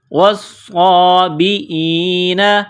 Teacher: والنصارى والصابئین، واو کو صاد کے ساتھ ملانا ہے، پلس کرنا ہے، صاد میں سختی کرنی ہے، کڑا زبر ہے، ایک الف کی لمٹ میں کھینچنا ہے۔ والصابئین، حمزہ کو یا کے ساتھ ملانا ہے